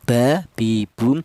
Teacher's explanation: Yang mim dan huruf ba ini dihasilkan dari kedua bibir yang rapat.